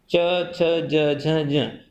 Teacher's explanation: यहाँ स तालव्य सकार और च वर्ग का उच्चारण स्थान तालु है